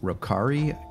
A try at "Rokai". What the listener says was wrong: You said Rokari. There's no R.